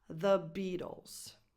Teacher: The Beatles. So you have the article, the, with a voiced th, and then you have B with a tense E sound, like in the word eat, Beatles, with a schwa in the middle.